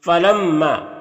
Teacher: अलिफ मद्दा को एक अलिफ के बराबर खींच कर पढ़ते हैं। · मीम मुशद्दद है तो गुना होगा यानी मीम की आवाज को नाक में ले जाकर गुनगुनाएंगे। एक अलिफ की मिकदार और यहां पर अलिफ से पहले मीम के ऊपर ज़बर है तो अलिफ मद्दा होगा। · فلما، میم مشدد ہے تو غنہ ہوگا، یعنی میم کی آواز کو ناک میں لے جا کر گنگنائیں گے ایک الف کی مقدار، اور یہاں پر الف سے پہلے میم کے اوپر زبر ہے تو الف مدہ ہوگا، الف مدہ کو ایک الف کے برابر کھینچ کر پڑھتے ہیں۔